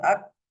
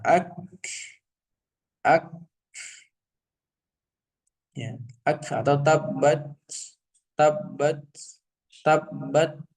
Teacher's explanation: kaf di sini memiliki sifat atau merupakan huruf yang berasal dari sifat syiddah dan juga memiliki sifat hames. Artinya tertahan dan hames ya.